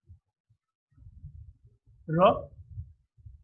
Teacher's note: Then we get a r. The tip of the tongue hardly touches the alveolar. It's also a voice sound because the vocal cords are held closely together, and we have got this voice sound.